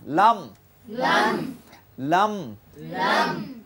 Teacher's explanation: লাম মুতাওয়াসসাতের সিফাত আছে, এই জন্য আওয়াজ পুরোপুরি জারি হবে না, বন্ধ হবে না